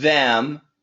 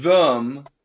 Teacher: we have the perfect pronunciation, them. Then we have the schwa, them